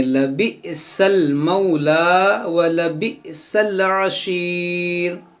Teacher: यहाँ पर देखें हमज़ा साकिना है, इसको झटका देकर पढ़ेंगे